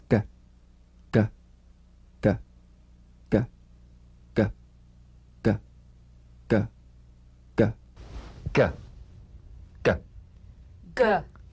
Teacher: Cognate, the voiced tongue back plosive consonant G.